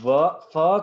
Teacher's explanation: फ is a fricative लेबियोडेंटल voiceless sound